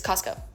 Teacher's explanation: We don't say our T's. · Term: California T-skip